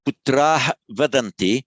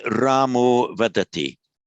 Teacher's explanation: Putra Vadanti. Now with the long R followed by the voiced consonant, all that happens, they just drop the visarga, drop that subdotted H